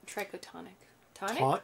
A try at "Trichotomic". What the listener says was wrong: No, it's an M. That one is an M. Yeah, I'm pretty sure it is. Because that's an N. There's no N.